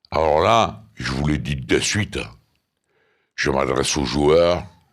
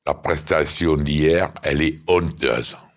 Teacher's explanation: Cet accent est souvent associé aux sonorités chantantes et mélodieuses du sud de la France. Les R sont prononcés de façon plutôt douce et il y a souvent des liaisons entre les mots. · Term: accent provençal